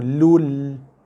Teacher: Baris 2 jumpa lam. So tekan pada lam. Tanpa dengung.